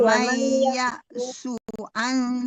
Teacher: Shu-nya tidak panjang ya Bu, jangan tertahan.